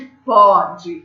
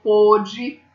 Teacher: Então, ó, pôde de passado, o som é diferente de pode. Ó, pode é som aberto, pôde é som fechado